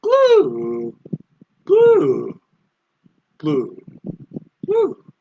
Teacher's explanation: tone 4 again, all the way from the top to the bottom.